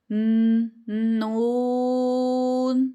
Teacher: زبان کا کنارہ جب اوپر والے دانتوں ثنایا رباعی انیاب کے مسوڑوں سے لگے تو نون ادا ہوتا ہے، ٹھیک ہے۔ تو 3 رائٹ سائڈ پہ اور 3 ہی لیفٹ سائڈ پہ دانت موجود ہیں، سامنے والے ہیں، ان کے ساتھ جب آپ لگائیں گی تو آپ کا نون ادا ہو جائے گا۔